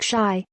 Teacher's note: to illustrate how tones can make all the difference take shy with a high flat tone